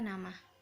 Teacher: Yang keempat adalah bunyi apiko-alveolar, yaitu bunyi yang dihasilkan dari keterlibatan ujung lidah, apex, dan juga gusi atau alveolum. Nah, ujung lidah sebagai artikulator yang menyentuh gusi, inti dari artikulasi.